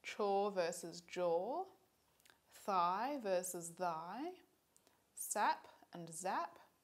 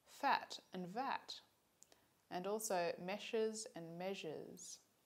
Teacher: If we look at some other sounds, it turns out that voicing is distinctive for affricates and fricatives too